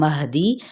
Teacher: हा जो सा अक्सा हलक से अदा करेंगे, यानी सीने के करीब वाले हिस्से से, और दाल की ज़ेर को लंबा नहीं करेंगे।